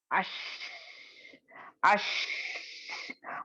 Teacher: इसका मखरज क्या है, आपको जबान दरमियानी जबान यानी उसके बिल्कुल बरअक्स यानी ऑपोजिट तालू को लगेगी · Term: तफशी